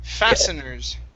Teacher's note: the t is actually going to be silent fasteners okay okay thank you fasteners fastener take out the t